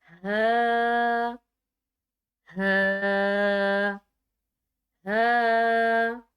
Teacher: ये मोटा हा होगा, इसको गले से नहीं मुंह से पढ़ा जाएगा